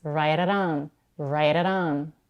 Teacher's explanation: te sounds like a very quick or D in American English a t can usually be flap in a fast speech when it comes in between two vowels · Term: flap te's